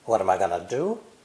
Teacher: all the vowels except the pronoun i are reduced · t between vowels drops the t